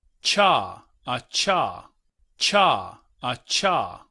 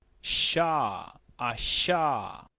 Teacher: La CH es como una combinación entre T y SH. · el portugués no tiene la consonante CH, sino que usa la SH. En ese sentido, debemos estar conscientes que la CH en realidad es un africado.